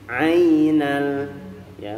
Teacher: Ainal ini mad lin iya. Murni bunyinya adalah di i. Ainal ya, bukan ainal.